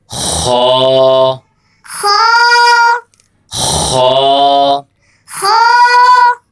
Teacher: خا بھی اس کو آپ نے ایک الف کی مقدار کھینچ کر پڑھنا ہے اور خا بھی حلق سے ادا ہوگا. اور یہ خا جو ہے یہ ہمیشہ موٹا کر کے پڑھا جاتا ہے